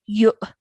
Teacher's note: you've joined the ya to the hamza sakin and you've pronounced it with a jerk sound